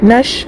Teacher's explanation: الف لام کے بعد حروف شمسی میں سے شین ہے تو الف لام کو نہ پڑھ کے نون کو شین سے ملا کے پڑھیں گے۔ نش، شین میں یا لین ہے، یا ساکن سے پہلے شین کے اوپر زبر ہے، نرم آواز کے ساتھ جلد ادا کریں گے شی۔ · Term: حروف شمسی کا قاعدہ